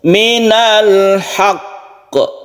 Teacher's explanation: Jadi tabrakkan dulu ke qaf, tekan dulu ke qaf, baru diqalqalahkan. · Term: tasydidnya dahulu, baru qalqalah